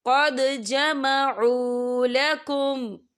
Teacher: یہاں پہ دال ساکن ہے تو یہاں پر قلقلہ ہوگا۔